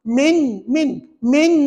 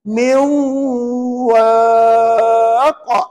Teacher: Dia kena masukkan dalam wau maknanya nun mati tu tak dibaca